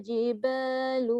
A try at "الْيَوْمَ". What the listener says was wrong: Qatalana al-yaw. Jadi Y tu tadi dia sebut waw dulu kan? Ni ya dulu, yaw.